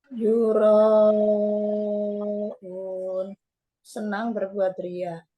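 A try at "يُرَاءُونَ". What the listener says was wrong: Unnya juga sama, Bu, dipanjangin. Kan dia mat arid li sukun.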